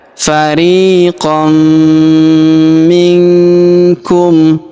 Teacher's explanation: huruf nun sukun bertemu huruf ku maka nun sukunnya melebur masuk ke huruf ku kita baca dengung dan samar Dengungnya kita tahan du sampai t harakatum.